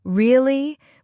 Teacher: If I say really with rising intonation, it means surprise. If I say really with falling intonation, it means I'm sure. The words are the same, but the intonation changes the meaning.